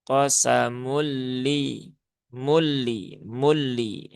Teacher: lam yang bertasydid itu ditahannya ya jangan terlalu lama jangan qosamul Ah, itu terlalu panjang ya menahannya terlalu terlalu lama. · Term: idgham bila gunnah